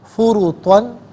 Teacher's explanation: فرطن را پر پیش ہے، یہاں پر بھی را کو پر کر کے پڑھا جائے گا